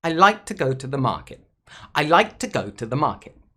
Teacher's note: the key words like i and the verb like are stressed the word go is stressed and the word market is stressed but the prepositions and articles are actually unstressed here to and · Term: stressed and unstressed words